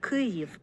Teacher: But it looks like a K and has the same phonetic value in both Ukrainian and English. My wife pronounces this as an aspirated K.